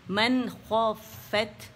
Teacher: throat کے جو letters ہیں اس میں سے خوا رہا ہے، خوا ادن الحلق سے ادا ہوتا ہے · فا باریک ہے، مشدد ہے تو اس کو جماؤ دیں گے